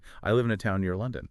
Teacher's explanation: Now, the emphasis is on near. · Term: stress